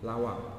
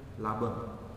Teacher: antara huruf w dengan huruf b itu satu wilayah artikulasi w B berarti huruf bibir maksudnya huruf bilabial